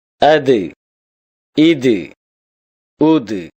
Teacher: தால் நாவின் நுனி மேல் வரிசை நடுப்பற்களின் ஈரைத் தொடும்போது ஒலிக்கப்பெறுகின்றது